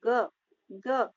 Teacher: कंठे, स्पर्श, सघोष और अल्पप्राण